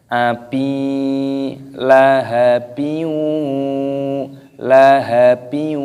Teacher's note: kasrah tanwin bertemu dengan wawu, hukumnya dibaca idgham bi gunnah. Cara membacanya yaitu dengan cara didengungkan.